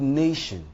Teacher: The word nation is stressed on the first syllable, that is the NA.